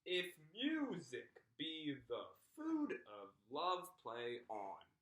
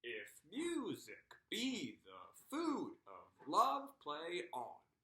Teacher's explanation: we would say it using iambic pentameter, stressing the second syllable in the foot